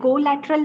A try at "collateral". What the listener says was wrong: the o is not pronounced so much collateral collateral